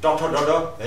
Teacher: tongue twist गरे जिब्रोलाई पल्टाए जस्तो गएर गरिन्छ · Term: रेट्रोफ्लेक्स